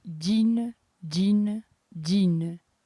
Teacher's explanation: Como esse E final é bem fraquinho, esse som de E, a nossa sílaba tônica acaba sendo a primeira, a sílaba mais forte.